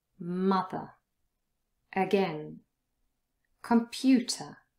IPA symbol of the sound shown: ə